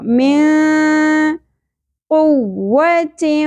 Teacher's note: نون ساکن کے بعد حروف اخفا میں سے قاف آ گیا تو یہاں پر اخفا مع الغنہ ہوگا